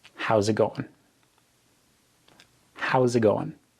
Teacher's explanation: So the S in how becomes a Z and the T in it really isn't pronounced at all and going is pronounced going.